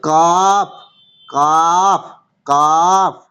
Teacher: মানে জিভের মাঝখানটা উপরের তালুর সাথে, জিভের মাঝখানটা তার বরাবর উপরের তালুর সাথে লাগিয়ে উচ্চারিত হয়